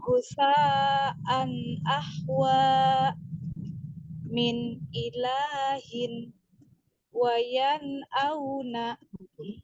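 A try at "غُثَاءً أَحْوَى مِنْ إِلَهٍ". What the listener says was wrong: Gusa kemudian min ilahin di sini lamnya tidak panjang. Min ilahin.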